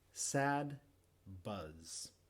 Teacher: La boca hace todo igual, lo único que cambia es que muevo las cuerdas vocales en uno y en el otro sonido no. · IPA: [s] & [z]